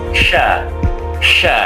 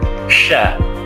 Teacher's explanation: pengucapan huruf yang disertai menyebarnya angin yang agak kuat di dalam mulut kita atau di dalam rongga mulut kita. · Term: tafasyi